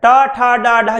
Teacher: जीभ सबसे ऊपर चली जाती है, उसे मूर्धा या मूर्धन्य बोलते हैं